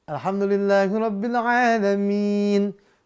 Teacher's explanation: Min, nunnya sukun karena wakaf, fathahnya disukunkan.